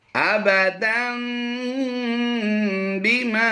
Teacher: अबदम, दाल दो ज़बर दन की आवाज होती है, इस नून की आवाज, दन के आखिर में जो नून आती है, इस दन की आवाज को हमने मीम से कन्वर्ट किया है। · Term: इकलाब